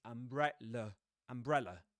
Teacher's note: the last syllable is deaccented. And usually in English, when that happens, this syllable has a schwa in it